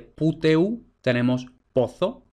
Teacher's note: la U breve evoluciona a O